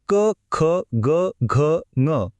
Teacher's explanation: हे आवाज थेट आपल्या घशातून कंठातून येतात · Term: क वर्ग